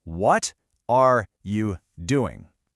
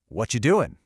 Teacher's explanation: The word are just vanishes.